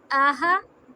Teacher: یہ حلق سے ہا آئے گا